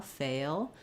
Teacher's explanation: This word is definitely going to be held longer than fell because it takes longer to say that diphthong and that glide to the L.